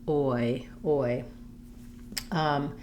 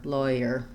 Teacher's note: you can almost go to a full o rounding and then to a more of a tense e, oi